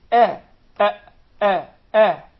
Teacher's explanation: the hamza is from the halq, the farthest part